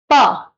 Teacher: आप प्रॉपर रुक रहे हो। फिर उसको पूरा खोल रहे हो मुंह को।